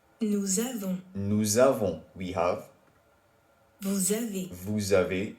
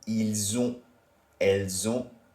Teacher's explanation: Given that all of these verb forms, once again, start with a vowel sound, la liaison makes the unusually silent S endings on all of these pronouns sound like a Z